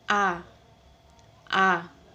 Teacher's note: posisi lidah berada di depan dengan mulut terbuka atau bibir tidak saling bersentuhan